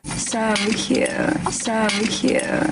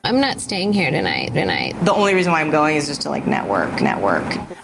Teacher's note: It's a low, creaky vibration produced by a fluttering of the vocal cords. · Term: vocal fry